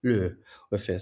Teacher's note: The Middle Chinese form would somehow turn out to be luH, so with a departing or falling tone.